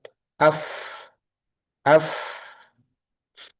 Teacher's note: ketika sukun afah ini terhentinya di ujung gigi seri atas menempel pada ee bibir bawah bagian dalam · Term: makhraj huruf fa